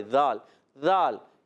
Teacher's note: یہ زا نہیں ہے، یہ ذال ہے. ذال ذال یہ بغیر سیٹی والا حرف ہے